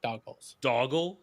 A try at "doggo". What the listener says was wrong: No, you're adding an L.